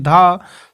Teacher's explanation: धा सघोष महाप्राण दंत है